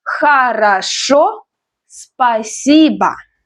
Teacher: Хорошо, the stress is on the last syllable. Спасибо, the stress is on I.